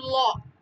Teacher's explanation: যে উচ্চারণে জিহ্বা মাঝামাঝি দিয়ে বাধা দেয় এবং পাশে দিয়ে বাতাস বের হয় · ল উচ্চারণ করতে গেলে কিন্তু জিহ্বাটা হচ্ছে শুধু মাঝখানটায় লাগতেছে, দুই পাশ কিন্তু ফাঁকা হচ্ছে, তার মানে মাছটা বাধাপ্রাপ্ত হচ্ছে, দুই পাশ দিয়ে বাতাস বের হচ্ছে, এজন্য সেটাকে বলা হচ্ছে পার্শ্বধ্বনি, ঠিক আছে।